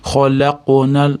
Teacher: Yo'g'on harflar bo'lsa yuqoriroq qalqala beriladi. Khalaqnal endi qofga yo'g'onroq qalqala beramiz, chunki qof yo'g'on harf. Khalaqnal xo yo'g'on harf, istilo harf bu ham.